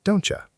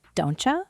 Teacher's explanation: But in fast speech, the T and Y blend together and become a ch sound. So it sounds like don'tcha. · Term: assimilation